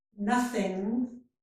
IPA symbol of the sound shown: ŋ